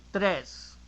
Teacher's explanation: the R is like a flap T or D, like in ladder, matter. So now you have to combine the T, a dry T, plus a flap T to say tres.